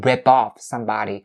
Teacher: the linking sound of the P sound at the end of the word rip to off. If off is coming after, right after the verb rip.